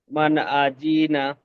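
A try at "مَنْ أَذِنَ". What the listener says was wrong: আজি টান হয়ে যাচ্ছে। মান আজিনা।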